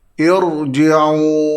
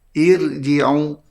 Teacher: Cara bacaannya hendaklah dibaca dengan tafkhim. irji'u. Tidak boleh dibaca dengan nipis.